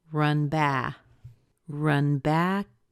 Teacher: that's where we'll stress will stress the word back